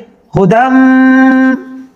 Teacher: میم کے اوپر شد ہے تو دال کو میم کے ساتھ ملا دیں گے ، ہدم، اور میم مشدد ہو تو وہاں غنہ ہوتا ہے،